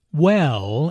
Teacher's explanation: Notice how the vowel is drawn out to sound like well.